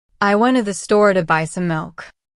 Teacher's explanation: The stress usually goes on went, store, buy, and milk. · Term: sentence stress